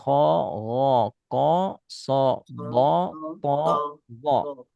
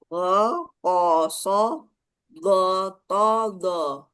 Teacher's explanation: Terangkat pangkal lidah hasilnya tebal, rendah pangkal lidah hasilnya tipis.